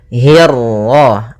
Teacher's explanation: kasrah bertemu ra yang tebal. Nah, di sini kita namakan dengan ra tafhim